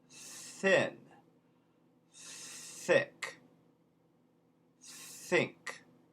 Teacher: Okay, so one thing that is a rule in Cockney that actually it comes from the High British is, in true British English, there are two types of TH sounds in English. There is a voiceless TH that's just air, as in thin, thick, think. And those THs turn into an F.